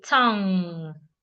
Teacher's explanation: When you have NG in a word, N and G make one sound. The G is not making a different sound, and the N is not making a different sound.